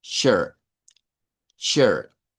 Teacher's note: esa I la vamos a pronunciar como E abierta